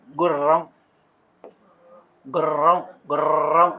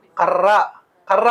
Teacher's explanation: నాలుక యొక్క కొన దంతమూలాన్ని కంపింపజేసినప్పుడు జరిగేటువంటి ప్రయత్నము కంపిత ప్రయత్నం. కంపింపజేయడం అని అంటే ఇట్లా కదలించడం అనమాట.